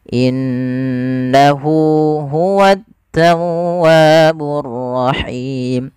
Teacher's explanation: pada lafal nun berharakat tasydid ada bacaan gunnah, yang dimana suara nunnya wajib kita tahan. Kesalahan terjadi tidak menahannya.